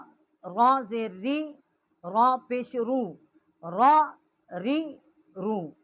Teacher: रा का जो मखरज है वो भी नून के मखरज के करीब है, मगर इसमें पुश्ते ज़बान जो है उसको दखल नहीं है